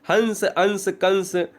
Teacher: कुछ भी आप ऊपर अगर बिंदु लगा दो वो अनुस्वार है अनुस्वार का उच्चारण की कंडीशन है कि इसका उच्चारण नाक से किया जाता है